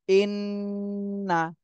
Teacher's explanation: হরকতের বামে নুনে তাসদিদ ওয়াজিব গুন্না করতে হবে